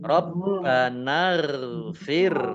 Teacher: Gin sukun juga bukan qolqala jangan dipantulkan